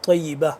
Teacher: آخر میں جو گول تا ہوتا ہے اس کو ہم وقف میں ہا میں کنورٹ کر دیتے ہیں